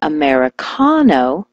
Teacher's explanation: switch the stress to the ka, like Americano